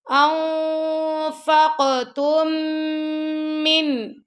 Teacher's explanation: جو فرسٹ والی میم ہے وہ ہم نہیں پڑھیں گے، دوسری میم پڑھیں گے ، کیونکہ یہ جو پہلی والی میم ہے دوسری میم میں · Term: ادغام